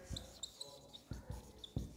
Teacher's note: it is produced by sucking just behind the upper teeth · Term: dental click